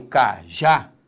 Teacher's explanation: palavra qual é descobrir a sílaba tônica quando eu falo cajá repare que a sílaba tônica é a última · Quando eu falo cajá, repare que a sílaba tônica é a última. Isso nos dá uma, vou escrever aqui, ó, uma oxítona.